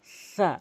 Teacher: সা বললে সিন ও সতের উচ্চারণ চলে আসে, এই জন্য আমরা সাকে সা বলবো। জিহ্বার আগা থেকে দাঁতের আগার সঙ্গে মিলাবো